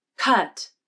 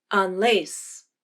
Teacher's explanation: the vowel is said faster and at a lower pitch. This happens often to unstressed syllables in American English.